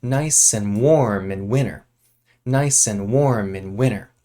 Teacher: winter has a t when it's written but we actually don't say this